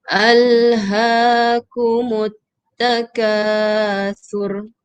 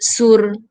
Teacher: huruf sa keluarkan sedikit lidah di antara gigi. Keluarkan sedikit lidah di antara gigi, jangan sebut sur.